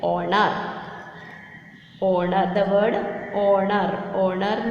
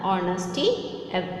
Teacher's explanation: Honor, the word honor. Honor means it is beginning with the H, but it is silent. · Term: H is silent